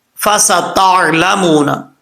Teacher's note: سین جو ہے وہ سیٹی کے ساتھ پڑھا جائے گا بریک · تا کے بعد عین آ رہا ہے، عین کو سختی کے ساتھ نہیں پڑھنا، نارمل پڑھنا ہے